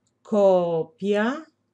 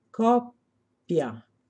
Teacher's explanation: nel primo caso vocale lunga copia Nel secondo caso vocale breve